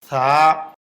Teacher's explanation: জিহ্বার আগা উপরের দাঁতের আগায় লাগবে, জিহ্বা এবং দাঁতের ফাঁকে বাতাস বের হবে, এক আলিফ পরিমাণ লম্বা হবে, পাতলা আওয়াজ হবে।